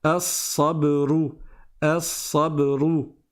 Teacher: donc je passe directement du A au sad